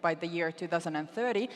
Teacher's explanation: you hear how like she's putting a lot of pressure on that th like really slamming it against her teeth.